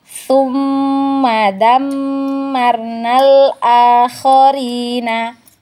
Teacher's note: Ya, wajib gunnah atau wajib didengung. Jadi, dengungnya atau gunnahnya ini ditahan 2 harokat ya.